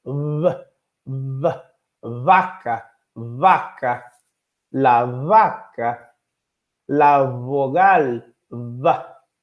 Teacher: Ba, pa. Mas em espanhol eles têm o bilabial fricativo. Precisa fazer uma fricção com os lábios.